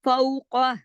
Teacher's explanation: हा को खींचेंगे क्योंकि उसके साथ अलिफ मद्दा है, दो हरकत खींचा